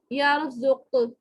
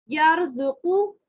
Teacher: یہ جو قاف کے اوپر جو پیش ہے نا یہ ہو جائے گی ساکن, اس پہ لگ جائے گی ساکن وقفن میں.